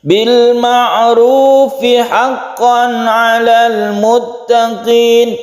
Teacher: Kalau kita teruskan, ini mad tabi'i. Bil ma'rufi haqqan 'alal muttaqin. Panjangnya hanya satu alif ru-nya ini. Tapi kalau kita berhenti, maka panjangnya bisa satu alif, dua atau tiga.